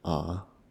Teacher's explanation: Third tone is sound of a rotating going down and coming up